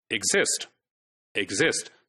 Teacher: the first syllable is not stressed. It's the second syllable which is stressed